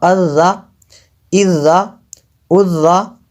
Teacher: ذال کو نرم پڑھنا ہے اور باریک کرنا ہے۔ حمزہ ذال زبر ال، ذال زبر ذا الذا اذا اذا۔